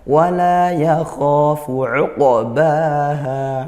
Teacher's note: Wala yakhafu uqbaha, uqa bukan uqa, itu hamzah, qafnya dipantulkan, qalqalah sughra seperti itu. Baha ini mat tabi'i keduanya karena fathah diikuti alif, dibaca panjang satu alif atau dua harakat.